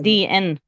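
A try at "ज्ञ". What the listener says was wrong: No, it's not DN. It's a guttural nasal. It's a combination of the guttural and nasal. Gnya, gnya, gnya. So gnya, gnya. It goes from here, and then it from the back of the mouth it enters the nose. Gnya.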